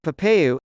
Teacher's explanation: Brazilian Portuguese speakers often use the U sound instead of the L sound at the end of words.